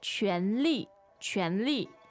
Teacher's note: So that's second tone, fourth tone, right?